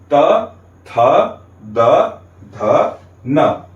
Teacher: अंदर से आती हुई वायु हमारे दांतों को स्पर्श करते हुए बाहर निकलती है। इसलिए त, थ, द, ध, न का उच्चारण स्थान हो गया दांत। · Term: दंत्य